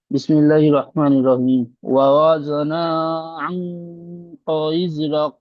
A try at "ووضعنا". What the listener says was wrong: ও জনা নয়, ও জনা, জদ আইন জবর জ।